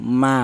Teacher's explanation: Untuk huruf sin itu bertempat di ujung lidah menyentuh pangkal gigi seri bawah. Untuk huruf mim yaitu bertempat di kedua bibir yang rapat.